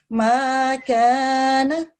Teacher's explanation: اور کاف بھی یہ پتلے والا ہے, ٹھیک ہے, موٹا کاف نہیں ہے جس پہ 2 نقطے ہوتے ہیں.